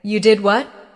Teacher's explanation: with a rising tone at the end, it shows surprise